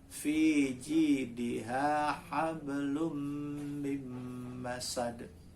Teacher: Ada qalqalah yang ringan, yang pantulannya ringan, kecil.